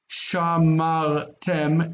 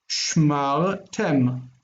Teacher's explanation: And the accent is on the end.